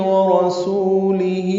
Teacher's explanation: لام جلدی باریک پڑھیں گے، ہی مد صلہ ہے دو حرکات یہ بھی لمبا کریں گے